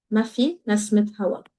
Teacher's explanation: we're going to vocalize that ta, and that's going to sound as nasmit hawa.